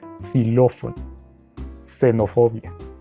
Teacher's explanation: aunque se escriben con x se pronuncian como si fuera una s